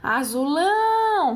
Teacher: azulão realmente uma oxítona tá a sílaba mais forte é oxítona a última sílaba mais forte é a última portanto é uma oxítona